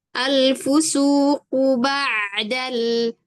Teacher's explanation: Ain kan punya bainiah artinya dia masih ada suara yang mengalir sebagian